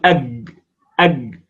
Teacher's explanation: هذه هي الكاف التي بين الجيم والكاف، لأن مخرجها يقع في بين مخرج الجيم والكاف